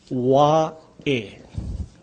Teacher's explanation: This is the Okina, or the glottal sound. That's the punching sound.